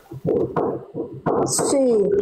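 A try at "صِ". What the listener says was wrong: Tapi jangan itu masih she. Tapi sli. Sli.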